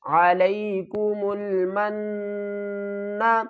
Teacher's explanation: وَظَلَّلْنَا عَلَيْكُمُ الْغَمَامَ عَلَيْكُمُ الْغَمَامَ وَأَنزَلْنَا عَلَيْكُمُ الْمَنَّ وَالسَّلْوَىٰ عَلَيْكُمُ الْمَنَّ میم کو نون سے ملائیں گے، نون مشدد ہے، یہاں پر گنہ بھی کریں گے